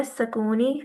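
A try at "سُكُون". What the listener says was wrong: सु, सकून तो नहीं होता। आप उर्दू में क्या बोलती, सकून बोलती हैं? सकून बोलती हैं, सुकून बोल, सुकून, सुकून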